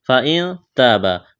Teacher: فإن تابا، نون ساکن کے بعد تا ہے، اخفا کریں گے یہاں پر۔ فإن تابا، الف مدہ ہے، تا کو باریک کرنا ہے، یہاں بھی الف مدہ ہے، ایک الف کے برابر کھینچنا ہے